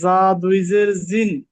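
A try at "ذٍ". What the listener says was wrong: হ্যাঁ এটা তো ঝা। আর জাল যদি হইতো জাল দুই জের জা- এই যে জাল বললে জিহ্বাটা দাঁতের যে আগাটা, এই আগার মধ্যে লাগবে। আর ঝায়ের ক্ষেত্রে জিন।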